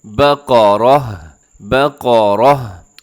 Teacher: وقف کرتے ہوئے ہا سے تبدیل کر دینا ہے، لیکن ہا کا ساؤنڈ آنا چاہیے